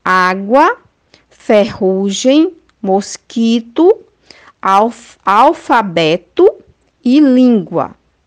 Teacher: a sílaba tônica pronunciada com mais intensidade é a penúltima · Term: paroxítonas